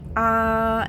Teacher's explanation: go ahead and put your hand on your throat and say ah, and you will feel it vibrate because that's how noise comes about.